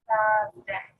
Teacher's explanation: Notice that as well I put my tongue in between my teeth to make that sound at the start.